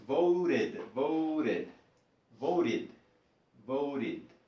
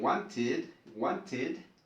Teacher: la T adquiere un sonido de una R o R, suave, como en quería.